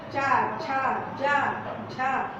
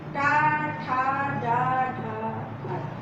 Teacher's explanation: चा थोड़ा पीछे हो जाएगा, टा थोड़ा आगे आ जाएगा